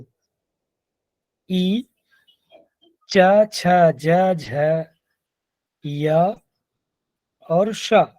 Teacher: इ च छ ज झ य और स इनका उच्चारण स्थान तालु होता है यह भी आपस में सवर्ण होते हैं गुरुदेव इसमें ई का